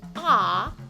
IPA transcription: ɒ